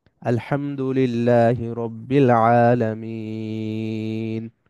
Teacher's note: আলামিন মিনটা লম্বা হবে একটু বেশি লম্বা হবে এক আলিফের চাইতেও বেশি লম্বা হবে কারণ এখানে আমরা থেমে যাচ্ছি যদি না থামি তাহলে এক আলিফ লম্বা হবে যেমন আমরা যদি